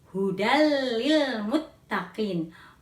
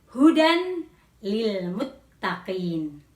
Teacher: ada tanwin hujan bertemu dengan huruf lam maka cara membacanya adalah tanwin lebur pada huruf lam atau dimasukkan kepada huruf lam · tanwin lebur kepada huruf lam atau dimasukkan kepada huruf lam. Membacanya menjadi hudal lil muttaqin, bukan hudan lil muttaqin.